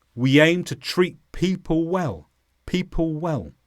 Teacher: Now when we say the word people, it normally has a l at the end. But again, I've dropped this so I can get faster to the next word.